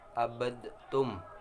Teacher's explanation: huruf yang pertama melebur ke huruf yang kedua, sehingga lafal huruf yang pertama tidak tersisa sama sekali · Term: idgham kamil